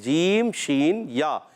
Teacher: شین کا جو مخرج ہے زبان کا درمیان تالو کا درمیان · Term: حروف شجریہ